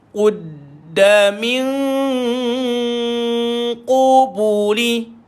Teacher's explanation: Nun kosong dia jumpa dengan qaf. Dengung samar.